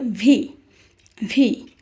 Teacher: উপরের দাঁত নিচের ঠোঁটের সাথে লাগবে